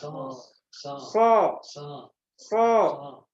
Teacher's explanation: SH karena dia dari ujung lidah kemudian dia harus idbak juga harus diiringi dengan lengketnya Tengah lidah ke langit-langit